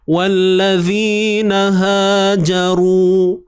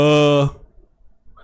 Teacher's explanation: Janji bunyinya ha pangkal kerongkong. Pastikan ianya ada perbezaan bunyi dengan bunyi huruf ha pedas lah.